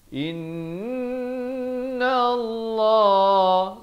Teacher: Lafz jalalah dibaca tebal dua harakat